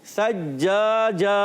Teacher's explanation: جیم کی ادائیگی کلیئر رکھنی ہے، چھ جیسی آواز نہیں آئے